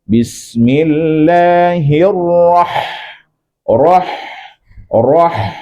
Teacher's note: aa dan ha itu keluar di tengah-tenggorokan